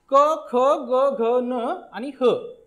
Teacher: याचा उच्चार होताना कंठ या अवयवाचा उपयोग होतो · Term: कंठातून उच्चार होणारे